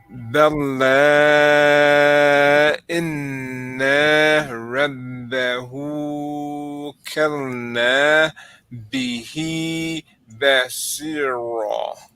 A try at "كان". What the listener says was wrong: Did you add a lamb after the calf that time? Yeah, kana.